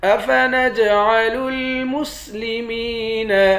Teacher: افنجعل المسلمین، جیم پر قلقلہ کریں گے، میم کو یا کے ساتھ ملا کر یا کو ایک الف کے مقدار کھینچ کر پڑھیں گے۔